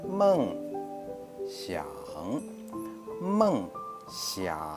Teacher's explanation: First is falling tones, and the second is falling then rising tones.